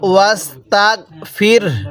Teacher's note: এরপরে রব্বিকা ওয়াস্তাগ ফির, এই হাটা আমরা সাকিন করে দেব ওয়াকফ করার সময়, আর হাটা হালকা উচ্চারণ করব, রটা পরিপূর্ণ উচ্চারণ করব